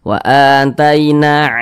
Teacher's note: maka huruf tersebut dibaca panjang Mad Thobi'i panjangnya dua harakat